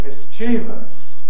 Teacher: stigmatized pronunciation mischievous with stress on the second syllable